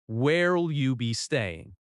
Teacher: The officer may also ask, "Where will you be staying?" In natural speech, where will often links and sounds like, "Where'll?" "Where'll you be staying?" The stress falls on staying.